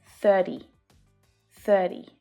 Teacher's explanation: it's really common to hear that flap T sound